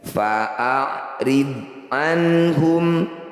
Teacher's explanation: bod sukun, sekedar mengingatkan bukan bacaan qalqalah, jadi tidak perlu dipantulkan.